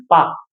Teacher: पा में हमारे दोनों ओठ जुड़ रहे हैं ना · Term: ओष्ठ